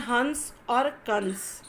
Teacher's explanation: यह जो अनुस्वार है इसका उच्चारण नाक से होता है